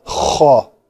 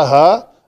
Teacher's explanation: खा में ये रगड़ आती है और हा में ये रगड़ नहीं आती। अगर हा में थोड़ी सी भी 10% भी रगड़ आ गई तो वो मखरज से थोड़ी खा की तरफ चली गई। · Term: गले की रगड़